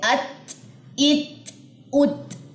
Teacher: اس میں آخر میں ہمس کی آواز آتی ہے، ہمس، ٹھیک ہے. حروف محموسہ میں سے یہ ہے، یعنی کہ اس میں آپ کی سانس جو ہے وہ جاری ہوتی ہے. ات، ات، ات، ٹھیک ہے، تا کے اندر.